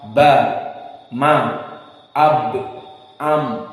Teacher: Kalau ba dan mim keduanya saling menekan, pressure, intibaq